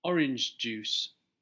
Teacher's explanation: native English speakers will make the joining sound only once as this speeds up their speech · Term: blending phrases